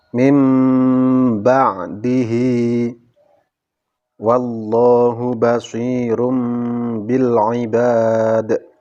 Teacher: nun sukun atau tanwin diganti dengan suara mim sukun untuk lebih mendekatkan makhrajnya nun atau tanwin kepada ba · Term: iqlab